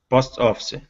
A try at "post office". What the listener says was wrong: Okay, so here you're pronouncing the E at the end, saying post office. You're pronouncing that E. The E is silent. Okay, so the word is post office.